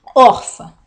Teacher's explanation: é uma paroxitona penúltima sílaba é a sílaba tônica e ela termina em an a con não a da regra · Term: paroxítona